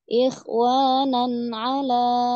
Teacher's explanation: Ikhwanan jangan ditahan ya. Nun izhar halki ya, jelas tapi nggak usah ditahan. Ikhwanan ala, tadi kelamaan.